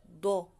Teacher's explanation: Medyo panguso yung bibig mo siya. Ang bibig mo, yung shape ng bibig. Nakabilog. Dod. Okay?